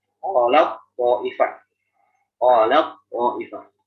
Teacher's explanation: Karena tak huruf tipis, kok huruf tebal. Maka yang tak ini yang tipis mengalah kepada huruf tebal. Jadi di sini sangat boleh diidgham, bahkan harus diidgham tak kepada koknya. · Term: idgham kamil